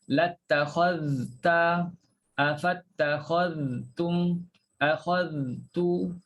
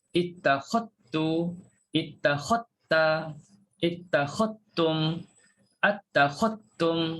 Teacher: Lidah tu sampai pada makhraj huruf zal.